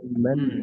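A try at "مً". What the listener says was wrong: মান মুখ খুলে দিবেন না, মেন। দেখেন মিমের পরে মান নুন আছে এখানে, তানবিনের মধ্যে নুন থাকে লুকায়িত, এজন্য আবার আওয়াজটা চালু রাখতে হবে, ম্যান।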